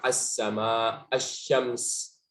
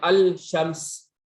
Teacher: Pasti diidghamkan lam sama shinnya. Kenapa? Karena ada dekat makhrajnya. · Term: lam syamsiyah